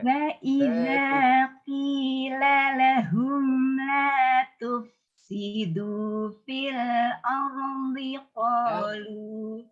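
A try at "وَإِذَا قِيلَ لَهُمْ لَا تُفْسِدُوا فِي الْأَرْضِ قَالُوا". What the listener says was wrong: Saya benarkan an saja ya, yang vokal dulu ya, enggak semuanya saya benarkan. Vokal ardi.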